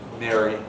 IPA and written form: ˈmeri (merry)